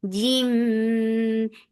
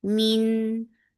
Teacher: idgham with gunna, so keep the sound in your nose for a longer time